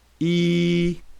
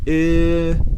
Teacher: For the E sound, the lips are spread very wide and tensed. For the I sound, the lips are spread less and relaxed.